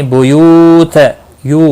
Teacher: یو واو مدہ ہے، ایک الف کے برابر کھینچ کر پڑھیں گے